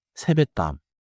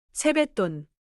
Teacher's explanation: the 받침 시옷 affects the next sound, so natural speech sounds like 세배똔.